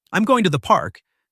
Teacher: I'm going to the park, emphasizing park to highlight that it's a special destination